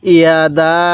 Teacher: ইয়াদা এরকম ভাবে তিন আলিফ টান দিব